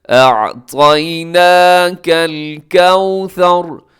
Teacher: نون کے اوپر کھڑی زبر سے کھینچیے گا